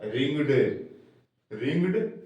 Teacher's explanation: उसका उच्चारण ड होगा ना कि इड या ऐड सिर्फ ड होगा